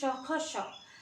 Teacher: क्योंकि बोलने से ही गले में उष्मा सा प्रतीत हो रहा है तो यह आपके उष्म व्यंजन है